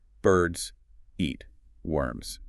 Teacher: in the first sentence, all three words are stressed. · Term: three beats